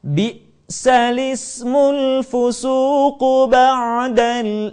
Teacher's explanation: harakat Hamzah pada kata alismu dipindahkan ke huruf sukun sebelumnya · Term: naqal